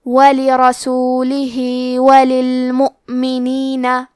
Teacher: کلمت لرسولہ میں را پہ زبر ہے، تو حرف الرا کا حکم ہے تفخیم، ہم حرف الرا کو موٹی آواز میں پڑھیں گے. آخری میں ہا کے نیچے کھڑی زیر ہے، یہاں حکم ہے مد صلہ صغرا، تو ہم اپنی آواز 2 مد کے برابر لمبی کریں گے. · حمزہ کی ادائیگی حلق کے نیچے والے حصے سے ہے